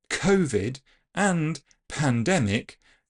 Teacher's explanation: the word COVID and pandemic both contain strongly aspirated sounds k and p